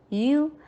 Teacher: یا کو سافٹ رکھیں، یا میں جی کی ساؤنڈ نہ آئے،